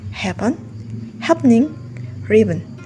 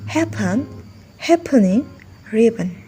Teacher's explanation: Words like happen, happening, ribbon, we can consider it equally acceptable to pronounce them with syllabic n. Happen, happening, ribbon, or with an happen, happening, ribbon.